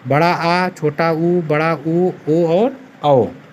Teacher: जिन स्वरों के उच्चारण में जिह्वा का पिछला भाग उत्थापित होता है उन्हें पश्च स्वर कहते हैं